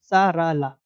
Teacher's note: इन तीनों व्यंजनों का उच्चारण स्थान वत्स है